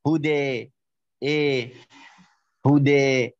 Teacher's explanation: ان ينطق يعني الفتحه قريبه الى الكسره وان ينطق الالف الالف قريبه الى الياء وتسمى بالايمان الكبرى مثل اي هكذا هدى هدى ايه لكن بالفتح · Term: الايماله